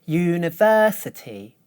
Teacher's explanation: notice that the third syllable is higher than the others